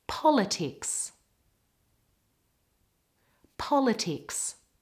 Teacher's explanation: the stress is on the first part of the word.